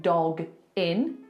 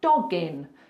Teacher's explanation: because we have a hard consonant dog and then a vowel when you've got that hard consonant followed by a vowel just push the two together like it's one word so instead of saying dog in you're going to say doggin · just push the two together like it's one word. So instead of saying dog in, you're going to say doggin. So it's like the second part of that sound is gin.